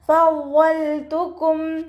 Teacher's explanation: നമ്മുടെ മേലെ മുൻപല്ലിൻ്റെ അറ്റം താഴെ ചുണ്ടിൻ്റെ ഉൾവശത്ത് നനഞ്ഞ ഭാഗത്ത് വെച്ചിട്ട് ഉച്ചരിക്കുക.